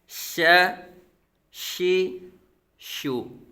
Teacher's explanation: हरफे शजर जुबान के दरमियान और तालू के दरमियान से